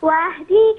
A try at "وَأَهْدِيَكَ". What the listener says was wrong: هنا وأهديك، الياء هنا عليها فتحة، مش وأهديك، وأهديك.